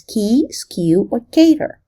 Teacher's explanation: the phoneme k in English tends to shift forward and become somewhat palatal when it occurs before the front vowel or a palatal approximant